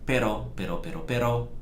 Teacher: you just want to tap the tongue on the palate behind the teeth where the same place you say D actually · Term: flap the r